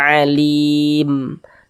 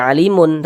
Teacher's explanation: Ini kalau kita berwaqaf ya, berhenti kita di huruf mim, kita baca alim. Tidak dibaca alimun, tapi dibaca alim. Kita sukunkan, kita matikan.